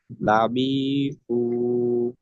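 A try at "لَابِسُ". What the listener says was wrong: বিতে টান হয়ে গেছে যেটাই টান শুধু সেটাই টান দিব অন্যগুলোতে তো টান দেওয়া যাবে না তাহলে লাবি এটা দ্রুত বলতে হবে লাবি লাবিসু আবার বিতে টান হয়ে যায় লাবিসু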